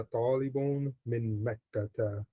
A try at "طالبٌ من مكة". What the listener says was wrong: This dhamma, this tanween at the end, talibun, don't make it long and say anna talibun. Don't elongate. Talibun. Bun. No, don't make it long.